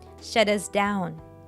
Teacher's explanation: sound in shut turns into a flapy before the vowel and all three words merge together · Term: flap T